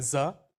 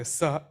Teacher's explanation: You vibrate your cards and that vibration produce an acoustic note. You vibrate let's say Z. You can feel your vibration here. If you say S, it's absent.